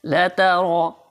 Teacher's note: لا اور تا جلدی سے پڑھنا ہے، اور را کو موٹا کرنا ہے، تا کو باریک رکھنا ہے، لترون، تو نہیں کہنا ہے، لترون بھی نہیں کہنا، کھینچنا بھی